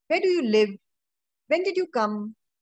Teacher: So there's always a falling intonation.